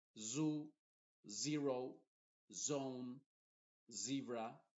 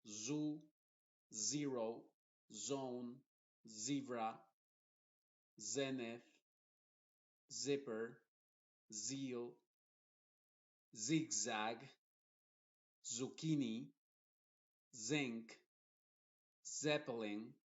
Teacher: Y el sonido de la Z inglesa no lo tenemos en español, pero se pronuncia como una S, solamente que se hacen vibrar más las cuerdas vocales. Diríamos una Z.